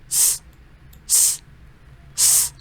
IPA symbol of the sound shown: s